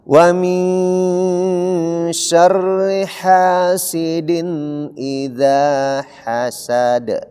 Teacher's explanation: Hasad ya, karena ini qalqalah kubra. Iya, ha-nya di sini harus ada keluar napas. Ha tipis.